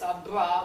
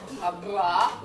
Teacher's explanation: That's the vibration between the lips, abra, where they trill.